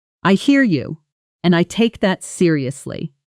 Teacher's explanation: Notice the pitch falling on seriously. · Listen to how the voice drops at the end of a firm confident statement.